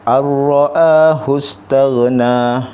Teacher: nun mati bertemu dengan huruf ra. Suara nun tu dia digabungkan ke dalam huruf selepasnya tanpa dengung. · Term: idgham bila gunnah